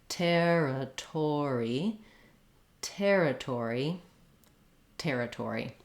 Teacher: Notice that in territory, both of the T's do have a little puff of air. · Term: true T sound